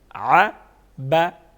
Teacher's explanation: بنا با با دونوں کیا بنے ع با ع با کیونکہ با حروف قلقلہ میں سے ہیں تو اس کی آواز میں جنبش پیدا کریں گے اور اس کو وضاحت کے ساتھ پڑھیں گے